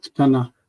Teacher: we say ktana ktana. Not ketana but ktana. It goes together. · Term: vocal shva